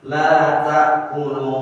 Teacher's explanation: kalau ada matobi bertemu hamzah itu dibaca lebih panjang dari matobi yang biasa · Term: mad jaiz munfasil